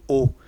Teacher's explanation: बोल के देख लो, ओ यानी जब भी हम बोलेंगे ओ तो किस में आएगा, हमारे जो होठ है एक राउंडिंग रूप में आएंगे या गोल वृत्त के रूप में आएंगे, इस कारण इनको क्या माना है, वृत्तमुखी।